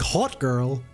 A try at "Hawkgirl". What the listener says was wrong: Yeah, no one can tell the difference. Your accent literally makes those things sound exactly the same every single time you said it.